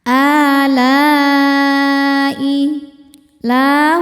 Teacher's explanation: Hamzahnya i ada pada kata alai. Maka lamnya panjang boleh empat boleh lima harakat. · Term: mad wajib muttasil